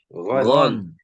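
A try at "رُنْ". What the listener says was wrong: Ya, jadi jangan gon tapi gesekan. Ron.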